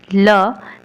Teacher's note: ल को पार्श्विक क्यों कहते हैं, क्योंकि जब हम ल का उच्चारण करते हैं तो हवा जीभ के बगल से निकल जाती है, इसलिए इसे पार्श्विक ध्वनि कहते हैं।